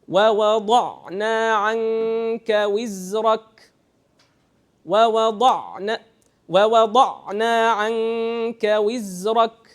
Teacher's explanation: So the zain is taking much more time than the ayn. So sukoon letters that are in between have to always be faster than the soft letters.